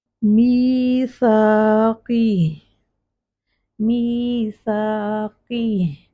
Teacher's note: قاف کو ہیوی رکھیں گے اور لاسٹ کا جو ہا ہے وہ ساکن ساؤنڈ آنی چاہیے. میثاقی کی تو ہا مس ہو رہا ہے، ہم نے میک شور کرنا ہے کہ ہا ساکن اپنے مخرج پر ساکن، اس کا سکون کلیئر ہو.